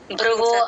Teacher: మామూలు బ కింద రకారం ఒక్కటే వినపడుతుంది మహాప్రాణం లైట్ అయిపోతుంది